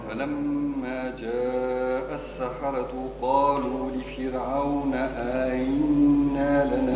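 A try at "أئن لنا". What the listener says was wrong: لا فيش مد النون. آئن لنا.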